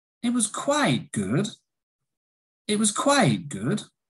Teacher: it was a rise, fall, rise. So, like we said in the last intonation video, probably there is some disagreement or a negative is coming.